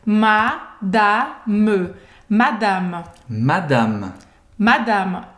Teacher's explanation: A gente não fala madame, não existe essa nasalização, é madame, madame, Madame.